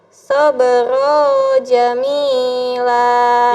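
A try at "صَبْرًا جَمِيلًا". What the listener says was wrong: Ya, lihat tulisannya. Fasbir sabran, ada annya. Sabran jamila.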